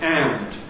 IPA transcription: ænd